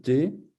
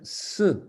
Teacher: Sa valeur phonétique est selon le contexte une consonne occlusive alvéolaire sourde, T, ou une consonne fricative alvéolaire, S